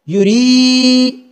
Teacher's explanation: آگے میم اور میم کے بعد الف، تو یہ میم کے بعد ظاہری بات ہے اگر زبر کے بعد الف ہو تو الف مدہ ہوا کرتے ہیں، اس میم کو ہم کھینچ کر پڑھیں گے، ذرا لمبا کر کے پڑھیں گے فعال لما، یا کے اوپر پیش تو اس کی آواز ہوگی یو، را کے نیچے زیر اور اس کے بعد یا ساکن ہے تو یہ یا مدہ ہوا، اس کو لمبا کر کے پڑھیں گے